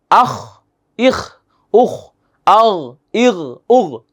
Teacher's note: কণ্ঠনালীর শেষ ভাগ থেকে উচ্চারিত হয় গইন এবং খ।